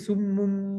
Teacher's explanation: tertutup, sebut mim, kemudian apa? Kemudian dengung.